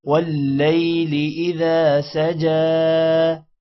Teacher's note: واللیل واو لام کے ساتھ ملے گا شد کی وجہ سے · اذا الف کی وجہ سے ذا تھوڑا لمبا ہوگا